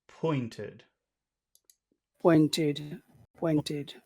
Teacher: sound serious so um pointed Point pointed not pointed pointed pointed it doesn't go up it goes down